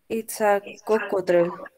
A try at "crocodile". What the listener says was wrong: Coco or croco?